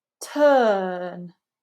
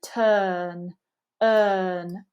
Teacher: you can see that we're not pronouncing the UR unless it comes before a vowel phoneme we want it to be very lazy turn earn really neutral